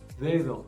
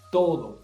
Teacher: Cuando es la D, la lengua quiere salir interdental, entre los dientes. Y cuando es la T, nada, la lengua no sale. No llega a salir.